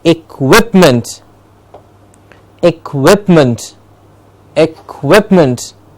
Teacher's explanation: the quip gets this clear stress